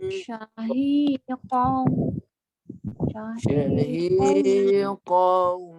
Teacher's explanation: 2 harakat masuk hidung dan masuk huruf waw. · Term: dengung